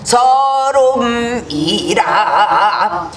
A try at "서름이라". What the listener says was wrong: 이라 이렇게 그렇게 맹하게 이라가 되는 것이 아니야. 거기에 단원적인 거기 때문에 거기서 아주 의미를 두고 해야 돼.